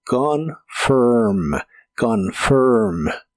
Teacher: La o se pronuncia muy suave y el final se pronuncia como ferm, pero con tu lengua retraída hacia atrás y debe sonar como monstruo, como confirm.